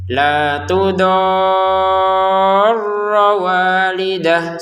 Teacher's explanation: La tudo panjangkan enam harakat sempurna baru tekan rnya karena di atas ro ada tasdid. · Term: 6 harokat